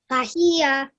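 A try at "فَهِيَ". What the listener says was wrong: Okay, remember not to elongate the last letter too long. Only 1 second, the same amount of time that you're giving the other two letters as well. Fahiya.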